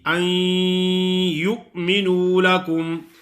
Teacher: نون ساکن کی جو غننے والی صفت ہے وہ باقی ہوگی، اور اس کی آواز ناک میں آئے گی